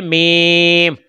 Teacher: دونوں ہونٹوں کے خشک حصہ سے ادا ہوتا ہے حرف میم